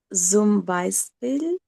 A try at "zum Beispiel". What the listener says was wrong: Not Zoom, it's Sum. Sum by Sir. Like sir for sun. Sun. Sum Beispiel.